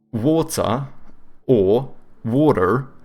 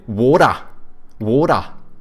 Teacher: they take like the soft D's from Americans, but they don't pronounce R's, they also say a schwa like the Brits